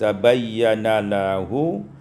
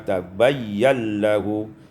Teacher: idghamun nun fil lam, diidghamkan nun pada lam sehingga dibaca tabayyal lahu.